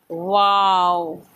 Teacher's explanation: होठों को क्या करेंगे, गोल करेंगे, वाव नहीं पढ़ेंगे। ऊपर के दांत नीचे के होंठ को नहीं लगना चाहिए।